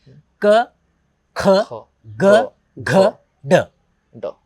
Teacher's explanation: ऐसे अक्षर हैं जो गले से निकलते बिना टकराए ना दांत को टकराते हैं ना हमारे होठ को मिलते हैं सीधे गले से डायरेक्ट आते हैं